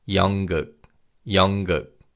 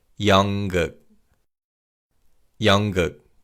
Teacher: the 니은 받침 in 연 is pronounced as an 이응 sound. So it's 연극, 연극.